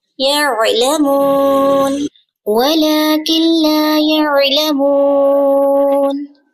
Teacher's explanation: عین کا مخرج آپ نے پڑھا نا، وسط حلق سے ادا ہوتا ہے. فنگر رکھیں گلے پر.